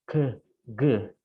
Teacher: When we make the sound k, g, the tongue is in contact with the lower side of the soft palate, and we call this velar consonant.